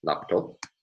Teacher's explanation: stress on the second syllable in Brazilian Portuguese